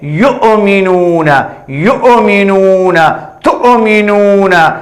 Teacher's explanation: حمزہ ساکنہ جھٹکے کے ساتھ پڑھنا ہے. یؤمنون، یؤمنون، تؤمنون، یؤ حمزہ ساکنہ جھٹکے کے ساتھ یؤمنون، اور ما قبل حرف ملا کر پڑھنا ہے.